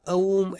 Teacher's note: लेकिन आदमी के स्वर यंत्र के हिसाब से जब भी ऊ बोलते हैं तो पहले अ साइलेंटली निकलता है, और जब भी हम ऊ का जप ज्यादा देर के लिए करते हैं तो सांस रुक जाती है और मुंह बंद होता है, और उसके लिए म की ध्वनि सुनाई देती है